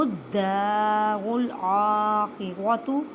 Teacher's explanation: را کے پر یہاں پہ پیش ہے اور یہاں پہ زبر ہے، اس وجہ سے ان دونوں را کو پر پڑھیں گے